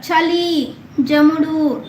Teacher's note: అ ఉలం కూడిన చజలు దంత్యములు